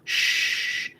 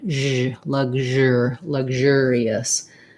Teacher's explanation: I write it with the letter ZH because it's like the SH sound, shh, but my voice is on, zh, luxure, luxurious.